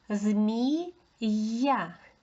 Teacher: Я стоїть після голосної, тому знову ми чуємо два звуки змії, я, й а.